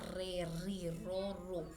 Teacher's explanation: la doble r tiene una pronunciación lingual múltiple